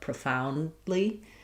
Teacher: That D is not really going to be let out. So, not a strong D.